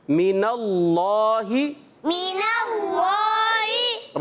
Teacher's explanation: اللہ کا لام موٹا پڑھا جاتا ہے, پر پڑھا جاتا ہے, تو اس کو ہم پر کر کے ادا کریں گے.